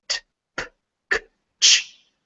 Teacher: when you make these sounds, your vocal cords, if you can feel your throat when you make them, does not vibrate. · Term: voiceless